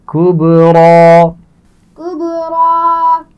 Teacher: کبریٰ با پر قلقلہ ہے اور را کو موٹا پڑھا جائے گا